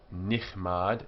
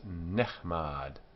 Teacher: But the chilik here has become segul. So it's not nichmad, it's nechmad. The strong guttural ch has a simple shwa, which is silent.